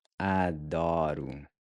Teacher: pronounced like a really soft D, where your tongue just barely taps the gummy ridge right above your front teeth